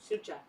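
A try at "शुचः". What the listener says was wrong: Yeah, you don't hold the u for longer. It's just a short vowel. Yeah, not sa sh. Shucha. There's not a lot of words in English where we're doing sh followed by ch. Yeah, shucha. But in Sanskrit you find that a lot.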